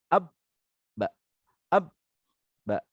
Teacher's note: sifat qalqalah, memantulkan suara tambahan. Ketika sukun atau mati, dia memantulkan suara.